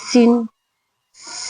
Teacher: صفت سفیر ہے اس کے اندر اس لیے سیٹی کی آواز آئے گی